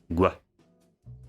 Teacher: once you have released the stop consonant, you make an extra sound with the lips. So like a w, gwa. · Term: voiced velar labialized stop